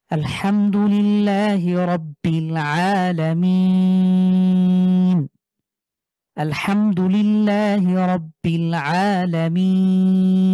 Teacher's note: মাদের হরফের পরে ওয়াকফু করার কারণে তিন আলিফ টেনে পড়বো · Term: ৩ আলিফ